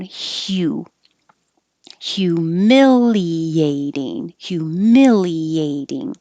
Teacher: This HU is really HYU. So your tongue starts very high in the Y position. At the same time, you make the H and slide down.